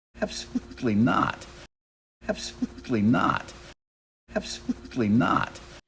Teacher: not add a little bit of stress there absolutely not and not has the most stress out of that two-word phrase